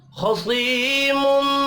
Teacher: मीम मुशद्दद पर गुन्ना करना है